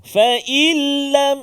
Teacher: Seolah-olah tak ada huruf nun tu, dia ada lam je yang sabdu. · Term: Idgham bila gunnah